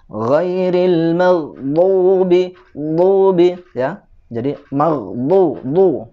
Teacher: Dha ini makhrajnya ada di hafatal lisan, ya. Hafatal lisan itu tepi lidah, dan tepi lidah ini hanya huruf dha saja, ya, atau huruf dad, ya.